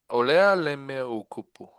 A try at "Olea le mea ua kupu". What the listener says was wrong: Make sure you say ua. Oleale mea ua kupu. The thing I think I've been trying to stress to you guys is make sure you say all the vowels.